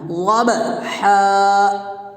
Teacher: با میں قلقلہ بھی کرنا ہے، اور یہاں بڑا ہا ہے، اس کو ادا بھی کرنا ہے